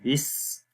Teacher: اب تسمیہ پڑھتے ہیں، تسمیہ بسم اللہ الرحمن الرحیم کو بولتے ہیں، بسم اللہ، با کے نیچے زیر ہے جس کو سین کے ساتھ ملائیں گے، بس، سین کی آواز کے اندر سیٹی کی آواز آئے گی